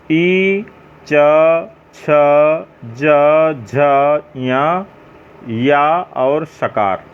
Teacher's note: उच्चारण स्थान तालु माने जिह्वा होता है।